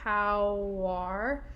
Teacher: i'm actually adding another w at the beginning of r